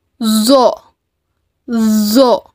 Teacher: huruf zo dengan menebalkan suara dengan mengangkat posisi pangkal lidah dan lidah bagian depan menutup bagian langit-langit